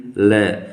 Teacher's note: मतलब दांतों के मूल मतलब दांतों के जो जड़ है उससे और जिह्वा के स्पर्श से, मतलब दांतों का जो मूल है वहाँ पर हमारी जिह्वा जो है स्पर्श करती है और उससे जो वर्ण उच्चारित होता है उन्हें दंत मूल ध्वनियाँ कहते हैं।